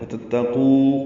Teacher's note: وتتقو قو واو مدہ ہے، دونوں تا باریک ہیں۔ ان دونوں میں آگے واو آ رہی ہے، ادغام نہیں کر سکتے۔